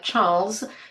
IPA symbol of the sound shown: z